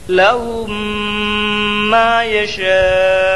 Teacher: آخری حرف پر جزم دے کر سانس توڑ دیں